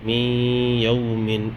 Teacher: نون ساکن ہے، نون ساکن کے بعد یا آ رہا ہے، یہاں پہ بھی ادغام مع الغنہ ہوگا